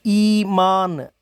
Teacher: इसके उच्चारण में भी जीभ का अग्रभाग ऊपर उठता है, ऊपर कठोर तालु के बहुत समीप पहुंच जाता है और होस्ट फैले रहते हैं। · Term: दीर्घ स्वर ई